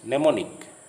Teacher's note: The M in the beginning of this word is silent, so it is pronounced mnemonic.